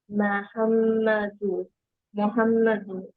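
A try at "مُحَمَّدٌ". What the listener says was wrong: এক পেশ নাকি দুই পেশ? লাস্ট লেটারটা ক্লিয়ার হতে হবে। মোহাম্মাদু নাকি মোহাম্মাদুন? এক পেশ নাকি দুই পেশ? শুনলে যেন বোঝা যায়, তোমারটা ক্লিয়ার বোঝা যায়।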